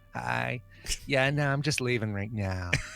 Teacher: she got on her phone and she was all vocal fry